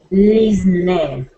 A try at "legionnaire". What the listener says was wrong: You're saying you're pronouncing a z. Okay. Let's say j.